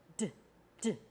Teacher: So there's a little bump there called your alveolar ridge. And you put your tongue on that alveolar ridge, and you kind of tap your tongue on that ridge, D, D, and you turn your voice on, D, D.